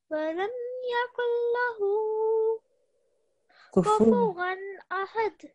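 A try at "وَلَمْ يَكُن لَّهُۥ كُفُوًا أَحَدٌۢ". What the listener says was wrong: Very nice. A very nice jerking sound at the end. That was really good.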